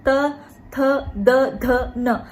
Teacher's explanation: जब हम दंत की बात करते हैं, जो ध्वनियां जिनका टकराव दांत से उत्पन्न होता है, दांत जिनके उच्चारण में महत्वपूर्ण भूमिका निभाते हैं, उसमें त वर्ग, त थ द ध न